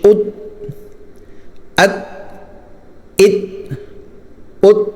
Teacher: اب یہاں پر تا جو ہے نا، تا اس کو بالکل بند کر دینا ہے، تا نکلے تو تا کی آواز چھوڑنی نہیں ہے، بالکل آواز بند ہو جائے، ٹھیک ہے۔ حمزہ تا زبر ات، اس کو ات ایسے نہیں پڑھنا بلکہ ات۔